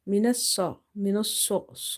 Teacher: this swad is heavy because it's from the musta'aliya letters, heavy letters.